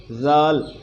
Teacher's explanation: زال کو نرم پڑھنا ہے، اس میں سختی نہ آئے، زا والی سختی اس میں نہیں آنی چاہیے